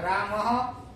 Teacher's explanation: માનો કે જેવો સ્વર પાછળ હોય, શબ્દની પાછળ જે કઈ સ્વર હોય એવું વિસર્ગનું ઉચ્ચારણ થાય. અહીંયા ખાલી મ હતો તો રામહ થયું.